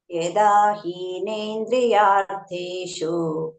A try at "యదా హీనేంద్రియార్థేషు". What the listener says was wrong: హీకి దీర్ఘం ఇస్తున్నారు, హీకి దీర్ఘం లేదు. యదా హి హి వదిలేస్తున్నాం అట్లా. యదా హీనేంద్రియార్థేషు